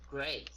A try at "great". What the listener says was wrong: Great, not gret. Okay, it's great.